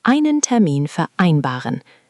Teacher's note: The V sounds like an F there